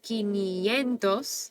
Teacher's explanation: Quinientos ends in an S, so we know that the emphasis is going to go second to last, quinientos.